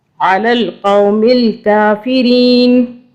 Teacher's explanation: علی القوم الکافرین، قاف کو جو ہے باریک والا جو کاف ہے یہ والا نہیں پڑھنا، اس کو بھی موٹا قاف قاف حلق والی سائڈ سے اس کی آواز آتی ہے، وہاں سے ادا کرنا ہے علی القوم الکافرین۔